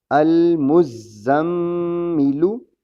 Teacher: میم مشدد ہے اس لیے یہاں غنہ بھی ہوگا